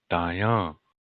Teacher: so accent on the second syllable · after me die on not a D sound you're saying cuz in Lakota there is no D sound D as in David that sound does not exist in Lakota it's a sound that's between the T and D in English